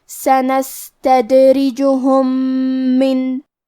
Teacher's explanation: کلمت من، یہاں حکم ہے ادغام، تو ہم پہلی میم کو دوسرے میم میں ملا کے ایک ہی میم اور تشدید کے ساتھ پڑھیں گے